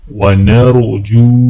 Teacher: نون کو را کے ساتھ ملاتے وقت را کو موٹا پڑھا جائے گا اور جیم کو واو کے ساتھ ملاتے وقت ایک الف کے برابر کھینچیں گے۔